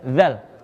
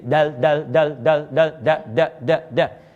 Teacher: Tapi kalau dalam ilmu aswat, sebetulnya yang kedua, dal lebih sulit yang ini. Zal itu disebut takhfif, rahwah. Makanya ringan, udara keluar. Tapi kalau dal itu disebut harful infijar. Harful infijar itu mesti diledakkan.